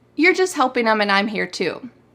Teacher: We cut out the T in the word just all the time.